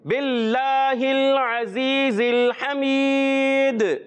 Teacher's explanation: جب یہاں وقف کرتے ہیں تو کیا ہوتا ہے؟ قلقلہ ہوتا ہے, کیونکہ آخر میں دال ہے